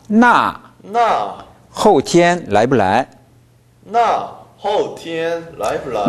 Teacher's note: 나 그러면요 이렇게 되니까 나 后天 来不来 나 后天 来不来 나가 사성이 충분히 안 내려왔어요. 나는 충분히 사성을 내려주고 강조해줘야 돼요.